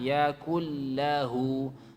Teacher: Nun ketemu lam langsung masuk ke lam